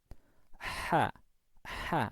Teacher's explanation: ketika mengucap ha, epiglotis ini itu dipepetkan ke dinding tenggorokan